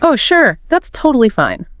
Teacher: Your pitch started high. It bounced up and down. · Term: musicality